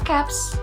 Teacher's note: change the morpheme z to a voiceless s when a noun ends with a voiceless sounds